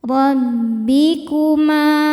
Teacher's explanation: Huruf ra dibaca secara tafkhim karena ra berharokat fathah. Cara bacanya ditebalkan.